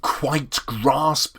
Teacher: sometimes you have two syllables stressed together for example quite grasp is two syllables which you have to stress